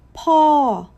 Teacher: Falling, up then straight down.